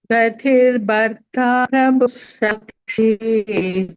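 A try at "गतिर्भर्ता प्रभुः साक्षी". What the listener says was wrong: Say bharta, say bha properly. Mahaprana. Take effort to say bha. Bharta.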